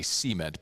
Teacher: In the South, we put the emphasis on the first syllable and say cement, but the correct pronunciation is cement.